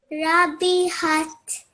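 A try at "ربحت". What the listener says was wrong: Good, well done. I like that you made sure that all your letters were 1 second long.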